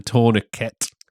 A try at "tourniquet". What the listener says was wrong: Americans pronouncing the T. tourniquet.